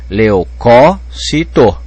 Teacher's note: Pode pôr acento, porque a tonicidade está caindo na terceira sílaba, de trás para frente. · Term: proparoxítona